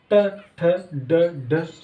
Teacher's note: अब जीभ उल्टी हो रही, यानी कि उल्टी हो रही तो मूर्धा बोलेंगे